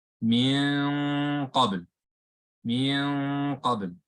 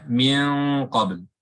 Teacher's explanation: And you kind of hear that this one is a little bit heavier, right? The ghunna is heavier. And the reason for that is because the qaf is heavy.